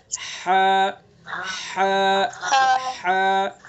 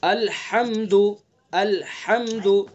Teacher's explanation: وہ یعنی یہ وسط حلق کا ترجمہ ہے، آگے درمیانی حصہ، وسط حلق یعنی حلق کا درمیانی حصہ، تو وہاں سے ادا کریں گے ہا کو